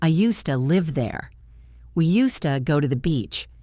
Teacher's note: We pronounce it "usta." The S becomes soft, and the to becomes a schwa.